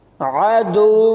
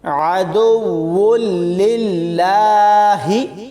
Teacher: دال کو واو کے ساتھ ملاتے ہوئے سختی سے پڑھیں گے اور واو کو لام کے ساتھ ملاتے ہوئے ادغام بلا غنہ ہوگا، یعنی غنہ نہیں کریں گے، اور لام کو ایک بار واو کے ساتھ پڑھیں گے اور پھر دوبارہ لام کے ساتھ ملا کر پڑھیں گے، یعنی واو لام دو پیش ول، لام لام زیر لل، لام کھڑی زبر لا، وللہ، حاضر ہی، عدو للہ۔